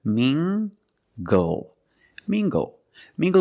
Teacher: using the nasal sound and the hard G together